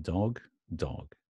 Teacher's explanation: British pronunciation dog dog backward a very relaxed o sound